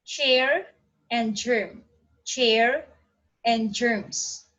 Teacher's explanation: a combination of stop and the final fricative. This sounds known as affricates. · These are the sounds formed by means of a complete closure of the air passage, which is afterward released slowly with friction